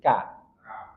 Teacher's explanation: Dia pangkal lidah, tetapi agak maju sedikit dari makhraj huruf qaf. Kalau qaf betul-betul pangkal lidah, kalau ini agak maju sedikit, ka. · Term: kaf